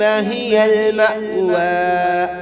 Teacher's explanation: ہا کو 1 الف کی مقدار کھینچ کر پڑھیں گے. میم پر جھٹکا مار کے پڑھیں گے.